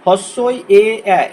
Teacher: উচ্চারণের সময় দেখো জিভটা সামনের দিকে বেরিয়ে আসছে, এই জন্য এই তিনটিকে সম্মুখ স্বরধ্বনি বলা হয়।